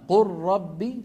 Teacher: وأن الراء من طرف اللسان قريبة من اللام، قريبة جدا، لكن ما هو من نفس المخرج.